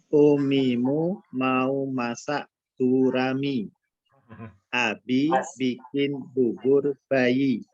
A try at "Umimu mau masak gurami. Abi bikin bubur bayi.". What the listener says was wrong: Pas di fathah belum sempurna, Pak. Umimu mau masak gurami. Mau masak.